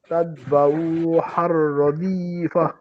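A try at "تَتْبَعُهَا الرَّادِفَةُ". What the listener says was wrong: এই যে উহার ওটা টান হলো আবার এই তাতবা উ টান হচ্ছে আবার হার ও টান হলো, দুই জায়গাতে টান নাই।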